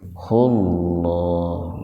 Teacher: Nah hu-nya jangan dibaca panjang, karena sebelum huruf ha huruf sukun, huruf mati. · Lafdul jalalah didahului oleh domah. Jadi lafaz Allahnya dibaca tebal. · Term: dibaca pendek, tabhim